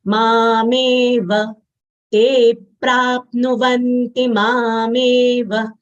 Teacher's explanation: Ma long sound, me long sound, va full letter, short sound. So we'll not extend this sound as it is a short sound.